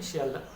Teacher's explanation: এবার হ লোপ, দেখো শিয়ালদহ বললাম, শেষে হ আছে, কিন্তু এই হ লোপ পাওয়ার জন্য তারপর উচ্চারিত হলো কি শিয়ালদা